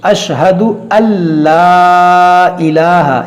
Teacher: यहाँ पर देखिए कौन सा कायदा है, यहाँ पर इदगाम है और बग़ैर गुन्ना के इस नून को लाम में दाखिल करेंगे मगर गुन्ना नहीं करेंगे